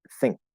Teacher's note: if you see nk together it's going to be using the back end plus k not a normal n plus k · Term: glottal stop k